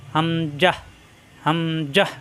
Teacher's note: হামজার মাখরাজ কণ্ঠনালীর শুরুতে মুখ খোলা থাকবে